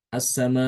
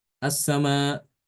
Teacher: Jadi ada semacam penekanan ke makhraj hamzah